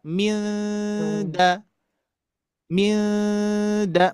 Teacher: nun matinya berhadapan dengan dal, maka posisikan ikhfanya di depan